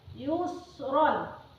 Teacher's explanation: Hukum bacaan mad iwad karena di akhir kalimat terdapat huruf mad tabi'i. Panjang bacaan 2 ketukan atau disebut dengan 1 alif.